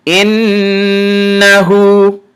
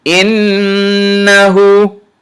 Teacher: Notice I held the sound of the noon shadda in my nose a little bit. Innahu. Hamza kasra noon shadda in, noon fathana إن ها ضم وصغره إنه.